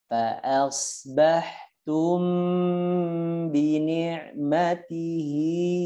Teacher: Sekarang hati-hati mim ketemu ba, dirapatkan bibirnya.